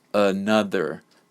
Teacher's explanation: this word has three syllables and the first and the third syllable contain the schwa sound so the middle part of the word is they stressed sound